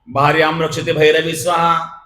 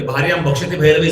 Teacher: शब्द उच्चारता उच्चारता रच्या ठिकाणी भ झाला